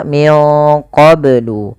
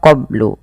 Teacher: harus dipantulkan karena ia ada bacaan qalqalah.